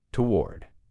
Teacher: Now, in American English, most people pronounce this as one syllable, toward. It's almost like that first O doesn't exist, toward. It's like a TW sound at the beginning, toward.